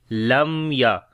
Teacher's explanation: وقت وہاں پر اظہار شفوی ہوتا ہے۔ تو اس وجہ سے یہاں پر میم کی آواز کو ظاہر کر کے پڑھیں گے